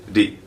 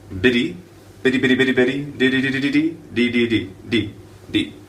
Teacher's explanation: coming together with this sound d d teeth are separated D it's all the tongue hitting the alveola ridge D just like that so that's how you make that sound